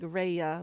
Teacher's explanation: the L will become an r in um Japanese and Korean